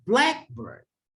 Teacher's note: Contohnya ini burung hitam atau burung berwarna hitam. Di bunyi kata black-nya yang kita tekankan. · ketika ada kata sifat dan kata benda disatukan, kita menekankan bunyi kata sifatnya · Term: compound word